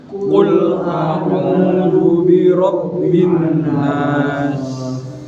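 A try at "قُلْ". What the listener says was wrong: Qulnya di sini Pak. Di tenggorokan. Kalau qul katakanlah, kalau kul makanlah. Kalau dia ini makanya di sini.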